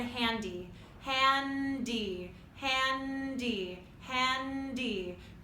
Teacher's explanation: Feel how your tongue comes up to the bumpy ridge for the N and then explodes away from there for the D.